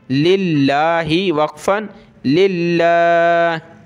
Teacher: लफ्ज़ अल्लाह से पहले जो वर्ड है लाम, इस पे ज़ेर है तो पतला करेंगे। लाम लाम ये दोनों मिलेंगे, ये लाम है और ये लाम है, ये दोनों आपस में प्लस होंगे।